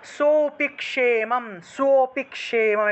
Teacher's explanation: এখানে আর আলাদা করে অ লিখি না, আলাদা করে অ না লিখে এখানে আমরা দুইটা হাইপেন ব্যবহার করি, দুইটা হাইপেন ব্যবহার করলাম যেন আমরা বুঝতে পারি যে এখানে সোটাকে একটু টান দিতে হবে, সোটাকে টান দিয়ে তারপরে পিক্ষেমম উচ্চারণ করতে হবে, ঠিক আছে, কারণ সোটাকে টান দিলেই অটোমেটিকভাবেই অ চলে আসে বা লুপ্ত অ এর উচ্চারণটা চলে আসে।